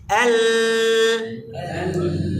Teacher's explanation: আবার কিছু লেটার শুধুমাত্র সাউন্ড কন্টিনিউ হবে, বাতাস বের হবে না। লাম, এল, বাতাস বের হয় না কিন্তু সাউন্ড কন্টিনিউ হয়।